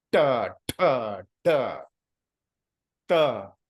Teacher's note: Cha, cha is coming to your center. Ta, the tip of the tongue is hitting the palate